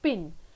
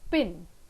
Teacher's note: both the lips come together they restrict the air and it is released suddenly and the sound is produced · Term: plosives